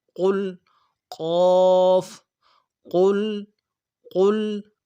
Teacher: اس کو موٹا پڑھنا ہے، موٹا پڑھنے کے لیے زبان کا بیچ بھی اٹھانا۔ قل، قاف، قل، قل، اور لام میں تھوڑا سا غنہ آنی ہوگا۔